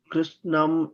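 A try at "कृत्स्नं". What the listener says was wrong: In that syllable, in that kritsnam, it is kr is a gunitaksharam. It is kr. Then it is snam. It is takaraha first, then sakaraha. Not sakaraha first and then takaraha.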